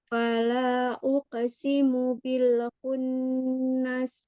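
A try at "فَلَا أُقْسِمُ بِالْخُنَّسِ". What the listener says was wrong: Umi masih uke. Tidak uke, tapi uko. Enggak. Uko. Kurang tebal, Mi. Jadi kalau ko, kan dia ko ya. Bunyinya kan ko. tapi tidak uko ya, Mi. Ukosi.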